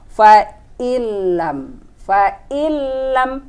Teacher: nun sukun bertemu dengan huruf lam, nunnya tidak dibaca. Ini hukumnya idgham bila gunnah. Jadi nunnya nggak dibaca, kita langsung ke lam.